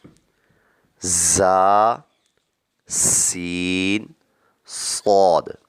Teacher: ان تینوں کو ادا کرتے وقت سیٹی کی طرح تیز آواز نکلتی ہے، اس لیے ان کو حروف صفیریہ یعنی سیٹی والے حروف کہتے ہیں.